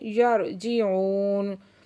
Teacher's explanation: वाव साकिन से पहले पेश है तो वाव मद्दा है और फिर नून को हमने साकिन कर दिया।